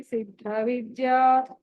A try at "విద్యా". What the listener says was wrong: విద్య కాదు, విద్య. ఇందాక కూడా ధ్యాన శ్లోకాల్లో ఒక చోట ధా వస్తుంది, అక్కడ కూడా మీ దగ్గర నుంచి జా వినిపిస్తాం, జా వినిపించకూడదు. ఇది సిద్ధేశ్వరి సిద్ధ విద్యా దా యా.